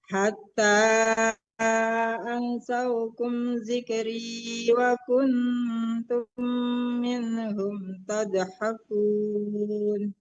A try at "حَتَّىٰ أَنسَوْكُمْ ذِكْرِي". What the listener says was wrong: ansaunya tercampur dengan sikhri ya. Hatta ansaukum zikri.